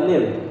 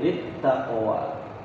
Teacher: Setiap huruf sukun kemudian di depannya ada huruf yang bertasydid, maka kalah huruf yang sukun itu, terutama huruf lam. Huruf lam kalau setelahnya ada huruf yang bertasydid, maka kalah dia.